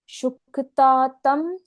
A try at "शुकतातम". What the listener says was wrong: यहाँ पर चुक, क का उच्चारण पूर्ण। शुकतातम। शुकतातम। शुकतातम तपोनिधिम।